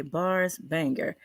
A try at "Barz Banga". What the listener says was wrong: Banga. No. You said Banger. Where do you see an R on his name?